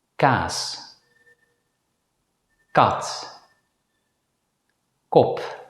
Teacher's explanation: The English consonant C as in the word key is aspirated. But the Dutch consonant C is pronounced without aspiration. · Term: voiceless consonant K